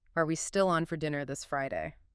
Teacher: It's the primary way we mark yes no questions in English. That rising pitch signals I expect a yes or no answer or I'm seeking confirmation. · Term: upward inflection